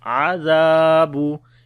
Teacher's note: Zal we read in soft sound and also we long due to alif madda.